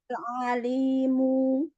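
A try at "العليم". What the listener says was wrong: Jangan panjang.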